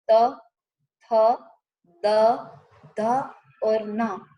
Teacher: दंत्य व्यंजन यानी कि जिन व्यंजनों का उच्चारण करते समय हमारी जिह्वा दांतों का स्पर्श करती है, यदि हम ऐसा प्रयत्न करें कि हमें दांत का स्पर्श होना ही नहीं है, होने देना ही नहीं है, तो ये व्यंजनों का उच्चारण संभव नहीं है।